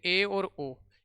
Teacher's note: वे स्वर जिनका उच्चारण करने पर मुंह आधा बंद रहता है, मुंह आधा बंद रहता है, आधा बंद रहता है, आधा बंद रहता है, उन्हें अर्ध समृद्ध स्वर कहते हैं।